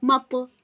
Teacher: Then mim pa zabar mat. We need to perform khalkhala at this ta and read it heavily.